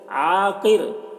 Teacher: عین کو حلق صدا کریں گے، قاف کو پر پڑھیں گے اور را کو باریک پڑھیں گے، کیونکہ وقف کی وجہ سے را کے دو پیش کی تنوین سکون سے بدل جائے گا، تو یا را ساکن سے پہلے زیر ہے، تو را ساکن سے پہلے جب زیر ہو تو را کو باریک پڑھتے ہیں۔